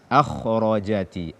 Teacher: Sebab kha dia adalah huruf tebal dan ketebalannya sempurna ketika dia fathah atau ketika dia sukun huruf sebelumnya fathah. Akhrajati. Tidak boleh kita turunkan derajat ketebalannya.